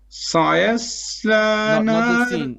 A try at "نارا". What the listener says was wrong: Not the sin. Sin is flat. سيا. Sin and ya is flat. سيصلى. Ra is heavy. نارا.